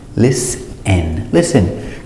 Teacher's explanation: So with listen, the T is silent. Don't pronounce the T.